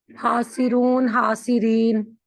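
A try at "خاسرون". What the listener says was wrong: खा। खा, खा है, ठीक है ना? हा नहीं, खासिर, खासिरून, खासिरीन।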